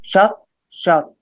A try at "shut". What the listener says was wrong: Okay, I'm hearing a lot of ah sounds, like ah. So watch out for your schwa sound. Your schwa sound will be a lot more relaxed, a little bit more closed, raising the front of your tongue a bit, and then the back of your tongue's down.